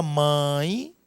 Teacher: Na palavra mãe, observe que esta letra E, ela está fracamente pronunciada, não é? Então, aqui nós temos uma semivogal.